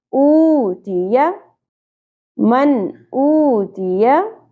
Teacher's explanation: وَأَمَّا من نون ساکن پہ اظہار ہوگا کیونکہ آگے حروف حلقے میں سے حمزہ آ گیا. من او واو ساکن حرف مدہ 1 الف کے برابر کھینچنا ہے. تی یا دونوں حرکات شارٹ رکھنی ہے، زیادہ نہیں کھینچی جائیں گی.